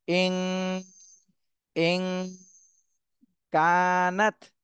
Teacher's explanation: নাত কানাত এখানে নুন সাকিনের পরে ইকফার হরফ কাফ এসেছে এজন্য এই নুন সাকিনে ইকফা গুন্না করতে হবে ইন ইন কানাত আর কাফে এক আলিফ টান দিতে হবে জবরের